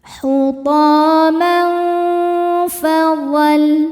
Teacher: Berikutnya ada hukum ikhfa hakiki awsat karena tanwin fathah menghadapi huruf fa. Cara bacanya tanwin disamarkan ke fa disertai dengung. Samar dan dengungannya sama besar. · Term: ikhfa hakiki ausat